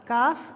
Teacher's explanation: زبان کی جڑ اور اوپر کے تالو کے سخت حصے سے مل کر ادا ہوتا ہے